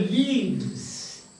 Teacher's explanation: voiceless sound has become voiced sound because of the neighboring two sounds, preceding and succeeding, they are voiced sounds.